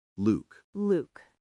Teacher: Now Luke, the name, has a long loo sound, like in moon or blue. Your lips will probably round more.